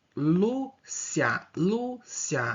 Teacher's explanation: A palavra Lúcia, ó, o Lu é o mais forte, então é a penúltima sílaba da palavra, paroxítona terminada em ditongo.